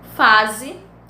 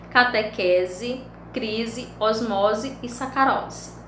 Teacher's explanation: o S está em meio a duas vogais, por isso que ele tem um som de Z